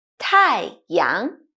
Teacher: Tai has the fourth dropping tone and yang has the second Rising tone